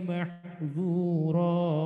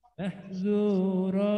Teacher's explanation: Rohnya jangan panjang-panjang, paling tidak rohnya itu 2 harokat.